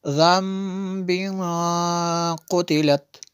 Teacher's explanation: اور یہاں پہ بھی ہم نے غنہ کیا تنوین کے بعد، قاف حروف اخفا میں سے ہے تو یہاں پہ غنہ ہوگا